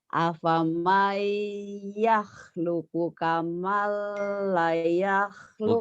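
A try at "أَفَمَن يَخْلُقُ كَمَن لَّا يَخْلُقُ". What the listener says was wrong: Bukan kamala. Sedikit di situ. Apa mayaluknya bacanya sih sudah benar, cuman nadanya aja yang belum pas. Tapi di kamala ibu salah lahnya panjang. Harusnya gini. Afamayah loko kamala yah yahluk.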